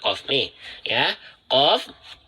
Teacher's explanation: Qof berasal dari 'aqsa lisan'. Bagian belakang lidah. ' Wal-aqsa lisani fa-qal-kafu asfalu.' Artinya, Qof berasal dari bagian terdalam lidah.